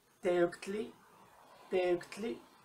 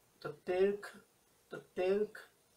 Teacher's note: lo vamos a escuchar como un k o un uk. Es un sonido muy cerrado, es un solo sonido